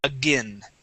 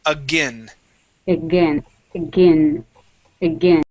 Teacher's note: But when it is with an A at the beginning, the A-I-N is pronounced with a short I sound. We say again.